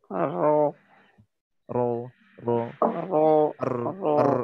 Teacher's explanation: Nah, lidahnya bergetar. Ya. Namun bergetarnya ini tidak seperti bergetarnya huruf R Indonesia. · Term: huruf ro